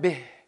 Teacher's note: Bih. That ha is at the end, and it whispers.